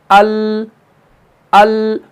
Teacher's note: जुबान का जो तरफ है, यानी तरफ लिसान जो है, ये दवाहिक से लेकर थनाया तक के मुकाबिल मसड़ों से लग जाती है तब जाके लाम अदा होता है।